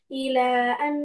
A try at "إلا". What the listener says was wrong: إلا not it's إلا it's illa, okay? It will read two times. Lam will read two times. One time it will join with the previous letter, which is Hamza, and second time it will read separately.